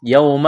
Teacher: واو ساکن سے پہلے زبر ہے، واو لین ہے، اس کو کھینچنا نہیں ہے